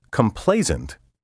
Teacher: with a z sound in the final syllable